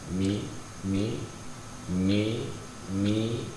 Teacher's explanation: Mim ini harokannya adalah kasrah, dan kesempurnaan kasrah itu dengan menurunkan rahang